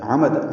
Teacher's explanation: عمد عین وسط حلق سے ادا کریں گے، عین اور میم جلدی پڑھیں گے۔